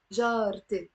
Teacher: And I say jarte, not jarae. We don't even say jarate. We drop the fatha on the ra. It becomes jarte, my neighbor, my female neighbor.